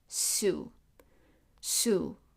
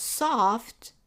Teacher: The S is pronounced in front in the front. When we pronounce soft, the s extends to the back. So s in sue is the soft sound.